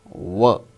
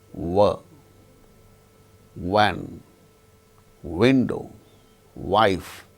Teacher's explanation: So, wherever we have got w in the spelling, it should be pronounced with the two labial lips as the active and passive articulators. Lower lip, active articulator, upper lip, passive articulator. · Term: bilabial sound